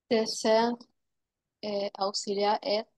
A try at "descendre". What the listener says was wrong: Pas descendre, descendre. Descendre. Esta combinación. Si vemos EN, AN o N, siempre vamos a pronunciar on, ¿ok? Siempre va a ser on.